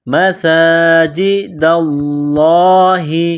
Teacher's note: لفظ اللہ کے نام سے پہلے زبر ہے تو لفظ اللہ کے نام کو موٹا کرنا ہے